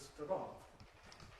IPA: sʊtʊrɒŋ